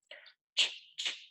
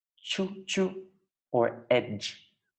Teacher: This is because the air is almost completely blocked at first, and then it is released in a fricative way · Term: affricate